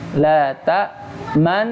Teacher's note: man udah masuk dengung tapi dia belum monyong. Sudah masuk dengung tapi dia belum monyong.